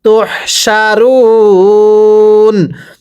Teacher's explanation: ওয়াওয়ের পরের হরফে ওয়াকফ হইলে 3 আলিফ টানিয়া পড়তে হয়, আর ওয়াকফের কারণে শেষ হরফে সাকিন দিয়ে পড়তে হবে। এই যে এই জবরকে বাদ দিয়ে শেষ হরফে সাকিন দিয়ে পড়বো, চাই উপরে জবর থাকুক, পেশ থাকুক, অথবা নিচে জের থাকুক, শেষ হরফে সাকিন দিয়ে পড়তে হবে।